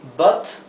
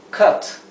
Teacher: aquí lo he escrito con una a y una e porque se pronunciaría como un sonido intermedio entre la a y la e